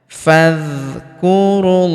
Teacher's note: Alifnya tidak dibaca. Ini hamzah wasal. Hamzah penyambung antara kata sebelumnya dan kata setelahnya.